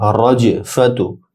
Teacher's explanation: রজ জিম শক্ত হবে, জিমে কলকলা হবে